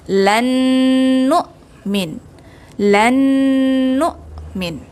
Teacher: nun mati bertemu dengan nun berharakat, dia masuk ke dalam idgham ma'al gunnah, juga berdengung dengan kadar 2 harakat